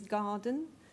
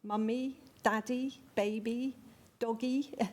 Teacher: it's got a strong first syllable and a weak second syllable because we put all the stress on the gar part of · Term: strong weak pattern